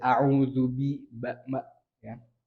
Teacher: Baru huruf ba, ini tidak berangin ya.